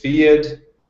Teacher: there were five instances where I reduced the h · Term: reduction of the age